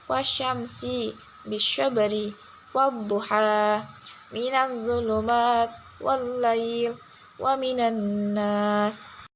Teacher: suara Alif menjadi hilang Walaupun ada tapi tidak dibaca